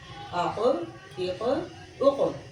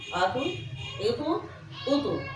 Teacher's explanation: حرکت تو ضرور ہو لیکن شد یعنی مشدد حرف کی آواز پیدا نہ ہو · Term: قلقلہ